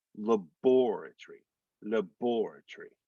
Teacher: in britain the accent's on the second syllable so that's why it's more like laboratory labor tree that and